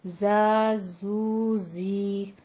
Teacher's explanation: اس میں آپ نے سیٹی کی آواز بھی لانی ہے اور اس کو تھوڑا سا موٹا رکھنا ہے آواز کو